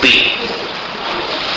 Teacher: पहली बार बी बोलते समय होठ मिलते हैं